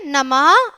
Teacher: नमः में भी है की ध्वनि सुनाई दे रही है। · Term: विसर्ग